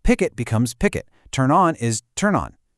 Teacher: Then there's consonant plus vowel, which is super common. The ending consonant just slides right into the vowel.